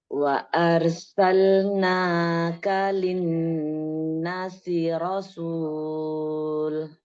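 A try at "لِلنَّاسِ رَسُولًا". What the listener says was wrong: Linnasi rasula. Itu tidak rasul. Rasula. Lam alifnya mad iwad.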